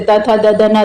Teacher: जैसे त थ द ध न दंत वाले होते हैं